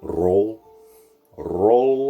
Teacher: more of a regular rolled or trilled r